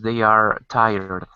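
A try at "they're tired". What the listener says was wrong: careful because it's not they are it's there and it's pronounced exactly like this these are the same words same pronunciation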